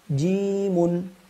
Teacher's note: dua harakat saja ya karena tidak ada Hamzah